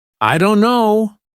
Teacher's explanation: The T sound is dropped completely. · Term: dropped sounds